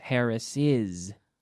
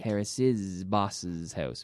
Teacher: instead of like a simple S, it's almost like a Z